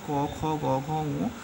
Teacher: ক, খ, গ, ঘ, ঙ প্রত্যেক ক্ষেত্রে গলা লাগছে, অর্থাৎ কণ্ঠ লাগছে।